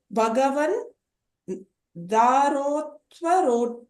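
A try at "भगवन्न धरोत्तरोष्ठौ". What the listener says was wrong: The third line, there's a double na there. So Bhagavan na dharotaroshthav. No, Bhagavan na dharotaroshthav.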